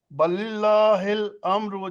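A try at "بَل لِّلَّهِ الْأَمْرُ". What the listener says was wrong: बल्लिल्लाहि, बल्लिल्लाहि। नहीं, बल को अलग ना पढ़िए, बल को अलग ना पढ़िए प्लीज।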